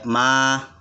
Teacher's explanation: dibaca panjang 2 kali, 2 harokat, ya, dibaca 2 harokat, ya, ma. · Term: mat